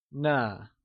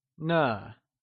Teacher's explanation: using a soft falling sound, as if the sound is fading away